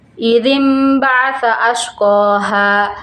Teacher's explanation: Di dalam bacaan ini, bacaan nun mati atau tanwin tidak lagi dibaca sebagai nun atau tanwin, tapi berubah menjadi bunyi huruf mim